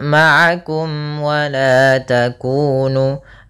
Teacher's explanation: izhar artinya jelas syafawi berkaitan dengan bibir kita maka mim itu makhrajnya adalah daripada bibir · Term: izhar syafawi